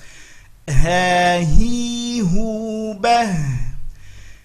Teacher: Hati-hati, biasanya terlalu kuat pada huruf ha, hi, hu. Tidak, dia sifatnya khafa, lembut saja.